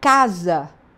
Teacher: Então se eu tenho a palavra casa, o S vai ter o som de Z